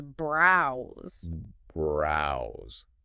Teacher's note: that long ow sound like in the word cow right and the S at the end of browse actually sounds like a z · the S at the end of browse actually sounds like a Z, so it becomes browse.